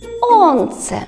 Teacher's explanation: перший звук с звучить твердо Отже позначаємо його однією рисочкою [музика] сонце голосний о позначаємо голосні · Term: твердий приголосний звук